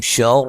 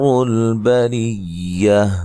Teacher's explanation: شر را کو موٹا ادا کریں گے، بریہ را کو باریک پڑھیں گے